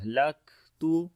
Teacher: काफ के अंदर सिफ्त शिद्दत और हमस दोनों आएगी, पहले आवाज बंद होगी फिर सांस जारी होगा